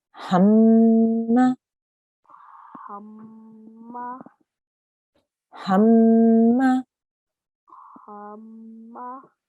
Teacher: So we need to make simple short strokes here and we hold on the nasal sound for about 2 seconds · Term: mim gunna